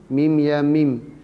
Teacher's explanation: Panjangkan suara 6 harakat. Habis panjangkan suara 6 harakat, barulah kita matikan mim. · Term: mak lazim harfi mukhaffaf